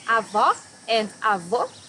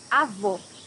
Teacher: Can you hear the difference between avó and avô? Here you have a closed O.